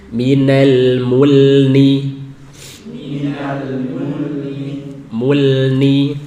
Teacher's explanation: Nah, ini diperingatkan dalam kitab Matan Jazariyah. Saat lam sukun bertemu nun itu harus dijelaskan. Jangan sampai samar atau ikut memiliki sifat gunah.